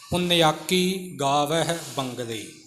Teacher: ਪੁੰਨਿਆਕੀ ਪਾਠ ਇਕੱਠਾ ਕਰਨਾ, ਪੁੰਨਿਆ ਕੀ ਵੱਖਰਾ ਵੱਖਰਾ ਨਹੀਂ ਕਰਨਾ।